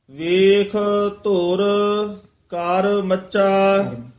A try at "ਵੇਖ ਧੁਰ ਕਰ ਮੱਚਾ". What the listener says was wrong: ਇੱਥੇ ਠਮਕ ਲਾ ਦੇਣੀ ਹੈ। ਮੱਚਾ ਵੱਖਰਾ ਨਿਖੇਰ ਕੇ ਪੜ੍ਨਾ ਹੈ